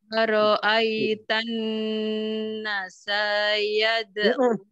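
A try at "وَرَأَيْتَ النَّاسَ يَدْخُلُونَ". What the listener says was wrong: Nanya panjang sayang. Nanya dua saja.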